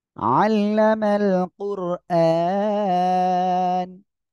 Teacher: র সেকেন্ড তার ডানে পেশ মোটা করে পড়বেন। আন, এখানে এক আলিফ টান, আর এখানে অক্ফ করলে সাকিন হচ্ছে, তাই তিন আলিফ টান হবে এখানে।